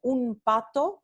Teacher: Básicamente, estamos adaptando al punto de articulación de la próxima consonante. P es bilabial, entonces también M es bilabial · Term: la bilabial nasal m